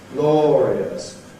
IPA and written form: ˈglɔːriəs (glorious)